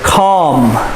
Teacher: the l is silent and it's the ah sound of the a